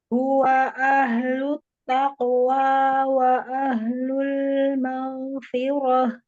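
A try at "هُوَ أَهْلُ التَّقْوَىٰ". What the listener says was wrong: Ya, huwanya disempurnakan saja dhammahnya tapi tidak dipanjangkan. Huwa dimonyongkan.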